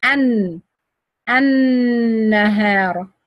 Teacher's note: Because the lam merged with the noon and became noon shadda. Lam shamsiya, I don't pronounce it at all. It's silent. You say an.